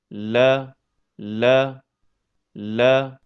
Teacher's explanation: Huruf lam keluar dari ujung tepi lidah yang bertemu dengan gusi bagian atas, dekat makhraj huruf ra.